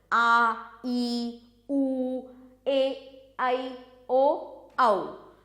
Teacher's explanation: दीर्घ स्वर, इन स्वरों के उच्चारण में अधिक समय लगता है, मतलब ह्रस्व स्वरों की तुलना में अधिक समय लगता है, इसलिए इन्हें दीर्घ स्वर कहते हैं।